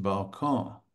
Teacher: And it's similar to the Spanish balcon, and the French balcon. The French nasalize the O and kind of leave the O.